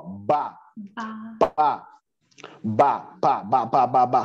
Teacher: o B e o P, eles são dois bilabiais.